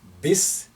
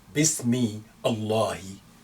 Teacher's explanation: So we don't say bismi Allahi. No, you join the me, you overlook the alif after that, and the first lam, you jump and connect me with the second lam